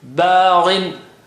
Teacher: Gha is high sounding. The double kasra brings the effect down, but still there.